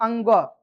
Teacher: इसमें कुछ नासिका में जाता है, कुछ ओठ में चले जाता है, ओठ के पास, है ना। अंगो जब बोलते हैं अंगो, तो कंठ का भी यूज हो रहा है और नासिका भी